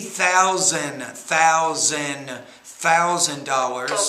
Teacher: don't forget to put the s on your dollars it's actually sounds like a z